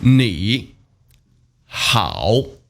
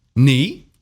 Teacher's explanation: There are 2 third tones together here. 你好. The first one, 你, has to turn into the second tone. 你. But it's still written as a third one.